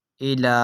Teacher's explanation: کھڑی حرکات کو بھی ہم حروف مدہ کی طرح ایک الف یعنی 2 حرکات کی مقدار تک کھینچ کر پڑھیں گے۔